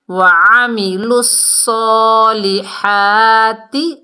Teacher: زبر ہے، ایک ایک الف کی مقدار کھینچ کر پڑھنا ہے، ہا کو حلق کے درمیان سے اور صاد کو موٹا پڑھنا ہے